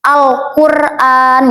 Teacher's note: Nah, alif lam qamariah ini alif lamnya dibaca jelas karena adanya sukun.